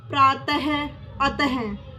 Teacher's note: विसर्ग इसका उच्चारण होता अह